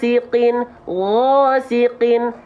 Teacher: Tanpa monyong ya, bukan Oke, ingat, bunyi vokal O yang dihasilkan itu bukan karena kita memonyongkan bibir kita, tapi cukup mengangkat bagian pangkal lidah kita. · ketika kita lafalkan huruf g rasakan dari menggorokan paling atas dan pangkal lidahnya diangkat biar bunyi vokal a-nya dengan otomatis jadi O tanpa monyong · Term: isti'la, istila